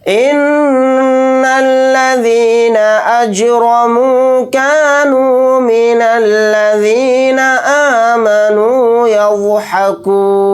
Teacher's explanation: یہاں پر نون کے اوپر تشدید ہے تو اس کے اندر غنہ کر کے پڑھیں گے